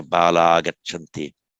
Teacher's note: Visarga, after long voiced consonant, the Visarga simply drops out.